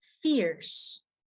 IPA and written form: fɪrs (fierce)